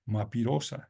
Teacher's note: En vez de decir mariposa, alteran la secuencia fonética de esa palabra y dicen mapirosa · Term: inversión